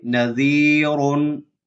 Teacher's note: را کے اوپر دو پیش ہیں تو را موٹا پڑا جائے گا